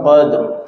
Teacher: Ra-nya juga tafkhim qadr, gitu ya. Terangkat bibir bawah, qadr.